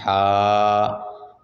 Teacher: ہا حروف حلقی میں سے ہے اور یہ گلے کے درمیان سے ادا ہوگا